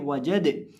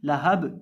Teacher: ये जो दाल है ये हरूफ़े कलकला में से है और इस पर हम जब वक़्फ़ करेंगे तो इसको हम हिलाकर पढ़ेंगे वजद। और ये बा भी हरूफ़े कलकला में से है, इसको भी हम हिलाकर पढ़ेंगे लहब।